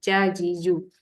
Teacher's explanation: asal lidah kat bawah bila nak sebut bunyi ja dia akan naik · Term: tengah-tengah lidah